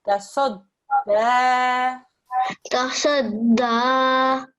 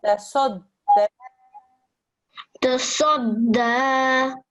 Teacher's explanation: Thick and heavy sound on the sod